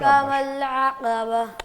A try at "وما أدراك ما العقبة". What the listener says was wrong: قاف کو پر کریں.